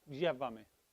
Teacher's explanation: it's a Y sound, but it's almost with your teeth